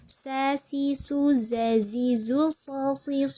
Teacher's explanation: huruf-huruf yang keluar dari ujung lidah dan pangkal gigi seri bawah adalah huruf sin.